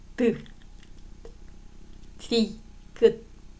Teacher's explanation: 치조음. 혀끝과 윗 잇몸 혀끝을 윗 잇몸에 대어내는 소리라고 합니다. 자, 혀끝을 윗 잇몸에 대는 거예요.